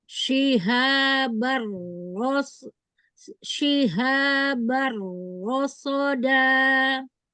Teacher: Takrir itu getaran yang ringan, getaran pada ujung lidah dengan getaran yang ringan